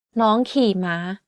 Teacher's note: In this sentence, the second word is in low tone, while the rest are in high tone.